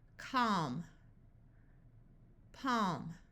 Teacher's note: o stock here we have a l before an m so the a will have the broad a sound of a and the L will be silent